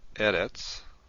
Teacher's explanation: Eretz is a word that has the stress on the first syllable, not at the end.